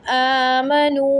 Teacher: نا آمنو کھڑا زبر 1 سیکنڈ کے لیے کھینچیں گے، واو مدہ ہے 3 سیکنڈ کے لیے